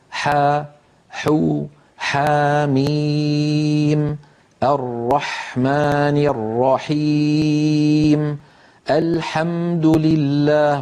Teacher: لسان المزمار يرجع ولكن قليلا، لا يرجع بالمقدار الذي كان يرجعه عند حرف العين. لذلك نطق الحاء أسهل من نطق العين.